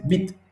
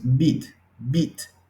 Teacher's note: Es un sonido corto, es más corto que nuestra I.